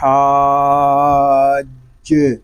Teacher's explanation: حا حلق کے درمیان والے حصے سے ادا ہوگا، اور جیم یہ حروف کلکلا میں سے ہے اور یہ مشدد بھی ہے، تو اس کو ہم جماؤ کے ساتھ ادا کریں گے۔